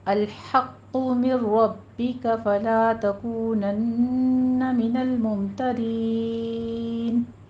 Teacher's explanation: لام ساکن ہے، جھٹکا نہیں دینا، الو نہیں کہنا، الحق میں حا باریک پڑھیں گے، قوف کے پر تشدید ادا کرتے ہوئے، قوف کے پر ضمہ ہے، ہونٹوں کو گول کیجیے۔